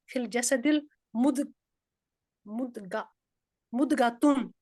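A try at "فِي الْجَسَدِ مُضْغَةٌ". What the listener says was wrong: हाँ, अब देखिए इसको मिलाना नहीं है क्योंकि अलिफ लाम नहीं लगा हुआ, तो इसको अलग पढ़ना है, यहाँ पे लाइन लगानी है, ये खबर है और ये मुब्तदा है, इनको जोड़ना नहीं होता आपस में, मुब्तदा खबर। अलिफ लाम भी आ जाए, खबर अलग होती है, मुब्तदा अलग होता है, ठीक है। तो फिल जसदी मुद मुदगतुन, यहाँ पे कलकला नहीं आना चाहिए, मुदगतुन,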